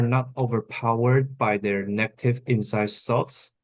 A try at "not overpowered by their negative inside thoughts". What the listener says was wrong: So like lower your like use falling intonation because with the intonation that you gave me earlier it feels like you want to add something more.